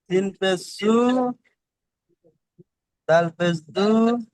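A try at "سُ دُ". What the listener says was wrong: কি হয়, দুটো এক করেন। না না, আমি বারবার বারবার বলেছি, সব ভাইজানকে বারবার বলছি, সিন পেশ সু, অক্ষরের টানগুলো কিন্তু পড়ছেন না। সিন পেশ সু, দাল পেশ সু, শুধু সু টান দিচ্ছেন কেন? ও ভাইজান শোনেন, সিন পেশ সু, আমি যেটা বলছি আপনি বুঝে পড়বেন তো, না হলে আন্দাজের মধ্যে পড়ে চলে যাচ্ছেন। আমি বলছি যে টান দেবেন না, এক নম্বর কথা বলেছি।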